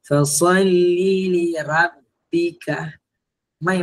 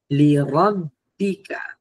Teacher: Ha ni silapan kedua pada ayat kedua ni adalah huruf ra. Biasanya segelintir daripada pembaca dia menipiskan huruf ra.